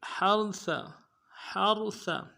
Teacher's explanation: ہا کو را کے ساتھ ملانا ہے، ہا کو گہرائی سے ادا کریں گے، را کو موٹا کریں گے، سا کو باریک ادا کرنا ہے.